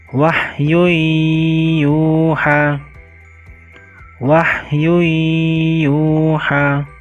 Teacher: mengucapkannya dengan memasukkan suara nun mati atau tanwin pada huruf sesudahnya dan dibaca dengan berdengung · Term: idgham bigunah